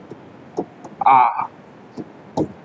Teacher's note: पहले की बात करें तो होता है विव्रत स्वर। विव्रत स्वर का मतलब होता है जिसमें मुख पूरा खुलता है